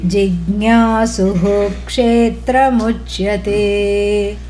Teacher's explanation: When the visarga is followed by the letter ksha, which is a conjunct compound, then the visarga is articulated fully. It does not blend in.